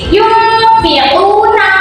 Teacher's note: huruf nun sukunnya itu dengungnya itu masuk ke dalam huruf fa.